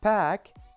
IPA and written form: pæk (pack)